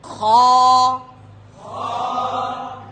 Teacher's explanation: এই উচ্চারণ হচ্ছে হলকের শেষ ভাগ থেকে, শেষ অংশ থেকে,